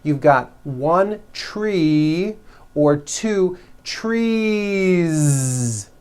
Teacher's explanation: So what you want to do if you're going to add an S to a word like this to make it plural is you continue the voicing throughout the whole word and add on a voiced Z.